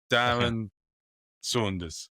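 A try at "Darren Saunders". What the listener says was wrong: Saunders. I think Saunders is a U. I think you just say Saunders. You don't say Sanders at all, do you? You can't say Sanders.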